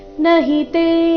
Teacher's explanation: ತೆ ದೀರ್ಘ ನ ಮತ್ತೆ ಹಿ ಎರಡು ರಸ್ವ